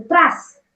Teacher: त आणि र मध्ये काहीही जागा ठेवायची नाही, पटकन वाचायचं त्रास